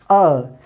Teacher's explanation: जब आप बोलेंगे अ, तो आप गौर करने पे पाएंगे कि अ जब आप बोल रहे होते हैं उस समय ये ध्वनि कहाँ से आती है? हमारे कंठ से आती है। इसीलिए इसे हम उच्चारण स्थान में कंठ बोलते हैं।